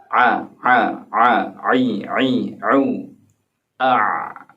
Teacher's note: 'ain berada di tengah tenggorokan (wasthal halqi)